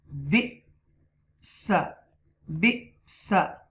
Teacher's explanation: You will read this hamza schoon with a jerk.